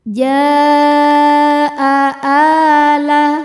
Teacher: Maka jimnya panjang, boleh 4 boleh 5 harokat, namun tidak boleh 2. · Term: mad wajib muttasil